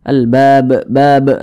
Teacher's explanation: Kemudian kita berwakaf atau berhenti tepat di huruf ba, maka huruf ba kita sukunkan begitu. Kemudian huruf ba ini karena dia sukun, cara bacanya dipantulkan. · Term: qalqalah kubro